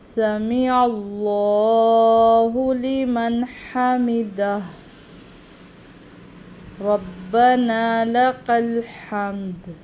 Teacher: اس میں بھی یہ جتنے بھی ہا ہیں یہ حلق سے ادا ہوتے ہیں ، سمیع اللہ، یہ عین ہے، عین کا تلفظ کا خیال